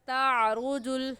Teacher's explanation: تعرج الملائکۃ میں را کے اوپر پیش ہے، اس لیے اس را کو پر یعنی موٹا کر کے پڑھیں گے، اور موٹا کرنے کا طریقہ کہ آپ کے دونوں ہونٹ گول ہو جائے، ایسے پڑھیں گے تعرج تا پڑھیں گے، تا کی جگہ توا پڑھنا غلط ہے۔